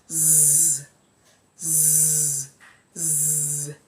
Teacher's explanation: we have it as voiced, that is the vocal cords vibrate when you want to articulate the sound. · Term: sound Z